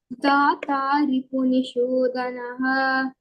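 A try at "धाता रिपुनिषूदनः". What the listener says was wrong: The dha is Mahapranah. How do you say it? Dhata Ripunishudanah.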